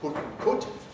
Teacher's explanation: The actual quality can vary. You can get people from Newcastle on Tyne who say put and cut with really oot-like quality.